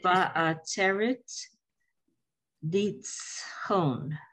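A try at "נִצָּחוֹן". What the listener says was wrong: Under the tzamach is an a, so nitzachon.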